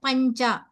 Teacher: अनुस्वरानन्तरं चकार अस्ति अतः परसवर्ण अनुनासिक भवति